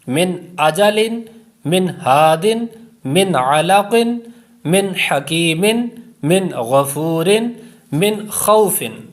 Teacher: ان 6 میں غنہ نہیں کریں گے، یہاں پر اظہار کا قاعدہ لگ رہا ہے